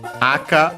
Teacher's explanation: aka on its own which is accent on the first syllable means red